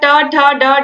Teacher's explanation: इसका उच्चारण स्थान मूर्धा होता है।